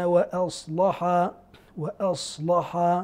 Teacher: انفرد ورش بقراءه تغليظ اللام